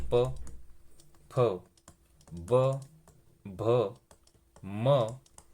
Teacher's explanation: ओष्ट्य वर्णमध्ये ज्यांचा उच्चार दोन्ही ओठांच्या सहाय्याने होतो